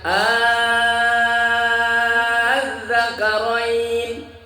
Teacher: A a kan dua-duanya hamzah tuh, a a ya hamzah keduanya diganti dengan a alif. Itu namanya ibdal.